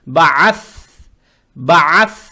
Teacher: Далее стоит буква Th, она межзубная, ее надо правильно произносить с сукуном